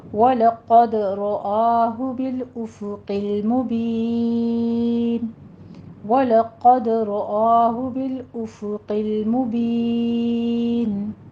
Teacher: وَلَقَدْ رَآهُ بِالْأُفُقِ الْمُبِينِ، وَلَقَدْ وَلَو نہیں کہنا، وَلَا لام باریک رہے گا، قد میں قوف کو پر پڑھنا ہے، دال کے اوپر قلقلہ کرنا ہے